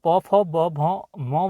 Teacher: प फ ब भ म वर्ण है यह हमारे होठों के टकराने से इनका उच्चारण होता है